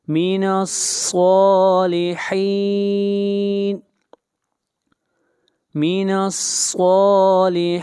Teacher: نون کو ملائیں گے صاد کے ساتھ، اور صاد کو موٹا پڑھیں گے، صاد حروف مستعلیہ میں سے ہے، اور یہاں پر صالحین کے اوپر مد عارض وقفی ہے، اور اس مد کی مقدار 3 الف ہے۔